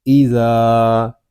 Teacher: ذال الف زبر زا، ایزا، ذال کو ہم ایک الف تک کھینچ کر پڑھیں گے کیونکہ یہاں پہ الف مدہ ہو رہا ہے